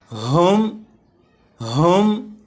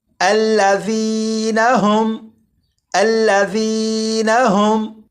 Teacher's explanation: ہا کو حلق کے نیچے والے حصے سے ادا کرتے ہیں، اور جب ہا کو پڑھیں گے تو آواز ذرا بھاری ہو، جیسے ہم۔ آپ بھی کوشش کیجیے گا کہ اسی طرح پڑھا جائے۔